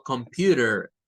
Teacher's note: el inglés norteamericano tiene esa mañita de quitar la T en este caso porque está, miren, a la par de dos vocales y meter un sonido de una R o de una D, dependiendo de la forma en la que se hable.